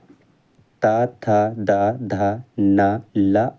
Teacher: जिनका उच्चारण ऊपर के दांतों पर जीभ लगने से होता है उसे कहते हैं दंत